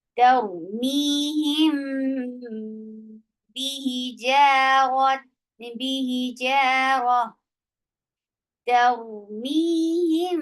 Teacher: गुन्ना भी किया जा रहा है और मीम को अपने होंठों में छुपाया भी जा रहा है · अब आप मीम को अपने होंठों में, अपने सीधे और नरम होंठों में, यानी अपने होंठों की पोजीशन को सीधा रखते हुए और अपने होंठों को जो है अपने होंठों में मीम को छुपाते हुए आप बा की तरफ जाएंगे और फिर आप उसको अदा करेंगे। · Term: इख्फा